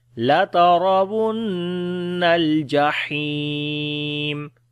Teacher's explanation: لترا کسی حرف کو لمبا نہیں کریں گے، را کو موٹا پڑھیں گے، جو زبر ہے اس کے اوپر.